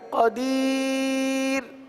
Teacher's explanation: را ساکن سے پہلے یائے ساکنہ جب بھی آئے گا تو را کو ہمیشہ باریک پڑھیں گے